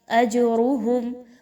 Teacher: جیم حروف قلقلہ میں سے ہے، یہاں پر اس کو ہلا کر پڑھا جائے گا